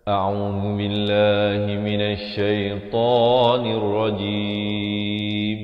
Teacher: di akhir barulah ditutupkan rapat mulut bagi menyempurnakan bunyi mim. Jangan awal jadi jim, itu salah ya.